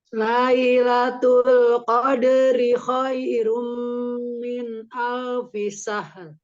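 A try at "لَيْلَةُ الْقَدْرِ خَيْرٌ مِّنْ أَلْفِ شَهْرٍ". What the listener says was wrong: Iya, mau tidak tamtil ya. Jadi tamtil itu artinya memanjangkan harokat yang seharusnya tidak panjang. Lailatul Qadri. Gitu-gitu jangan diayun. Lailatul Qadri khairum min alfi syahr. Khairum rum ro-nya ditebalkan, ro yang di ujung juga ditebalkan.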